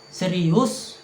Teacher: Nada naik ini menunjukkan rasa terkejut, betapa kagetnya kita. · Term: nada tinggi